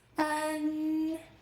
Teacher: What we are learning today is front nasal finals. The sound ends with your tongue tip touching behind your upper front teeth.